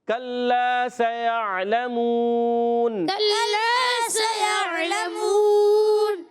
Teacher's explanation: سیعلمون میں سین سیٹی کے ساتھ ادا ہوگا، یا کو عین سے ملائیں گے، عین حلق کے درمیان والی حصے سے ادا ہوگا، لام پر زبر ہے، لام کو کھینچنا نہیں، میم واو پیش منہ، واو مدہ وقف کرنے کی صورت میں مد عارض ہو جائے گا۔